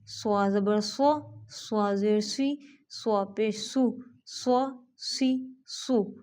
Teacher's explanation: اب یہ بھی سیٹی کے ساتھ، سین بھی سیٹی کے ساتھ، زا بھی سیٹی کے ساتھ اور صاد بھی سیٹی کے ساتھ، لیکن صاد کو موٹا کر کر پڑھنا ہے